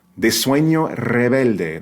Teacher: That R has to be the trill, right? The rolled R